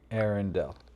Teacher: Arendal is pronounced as A-R-N-Del. The emphasis is on the first syllable, with air sounding like the word for the atmosphere, followed by a short N sound, and ending with Dell, like in Dell Computer.